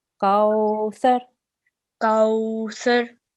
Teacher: Kaw, make sure it's waw lean, so you have to elongate that as well.